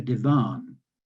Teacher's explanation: with a slight stress on the last syllable